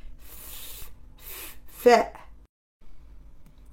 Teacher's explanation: on touche le les dents supérieures avec la lèvre inférieure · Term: la lettre fa